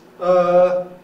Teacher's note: hesitation noises is they stand outside intonation they don't have an intonation pattern they're usually on the sort of middle pitch